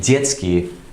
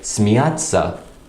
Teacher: in a word like детский, the t sound is quite short. Meanwhile, in a word like смеяться, the t is quite long, it's quite emphasized.